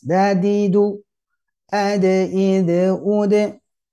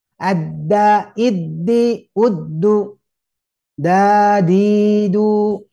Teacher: sama makhrajnya, ujung lidah menekan pangkal gigi seri atas. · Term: huruf dal